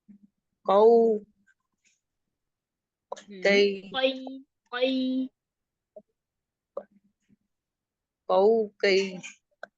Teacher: जो मोटे वाला काफ है ना इसको आपने जुबान के पीछे वाला जो सबसे आखिर वाला हिस्सा है ना वो आपके नरम तालू को लगे